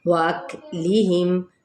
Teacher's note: کاف پہ ہمس ہوگا اور میم پہ اظہار شفوی